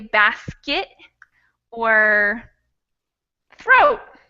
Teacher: when we have T's at the end of words we usually don't pronounce them fully we gave it we give it a quick stop